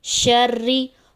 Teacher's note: رو کے نیچے زیر ہے اس کو باریک پڑھا جائے گا